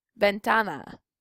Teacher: So that means the first A receives the stress because it is the second to the last syllable